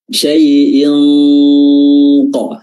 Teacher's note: Makhraj huruf qaf adalah al-aqta al-lisan. Lidah bagian dalam, bagian terjauh, ya. Dia hampir dekat dengan adanal halq, tenggorokan bagian atas.